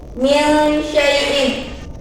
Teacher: Hukum bacaannya ikhfa karena nun mati bertemu dengan shin.